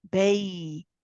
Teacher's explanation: The ya is rakhawa. Let it run. · The meme followed by the ya is idhar shafawi. Again, you pronounce the meme with tawassut. You stay on it for a little bit, followed by wow with a rahawa again.